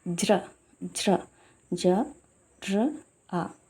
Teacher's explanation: చూడండి ఇడ్లీ యొక్క ఒక శబ్దము లేని జ ర ప్లస్ అ జ్రము అక్కడ ఎన్ని శబ్దాలు పలుకుతున్నాయి జ పలుకుతుంది ర పలుకుతుంది అ పలుకుతుంది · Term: సంయుక్తాక్షరము